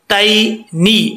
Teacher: یہاں پہ یا لین ہے اس کو لمبا نہیں کریں گے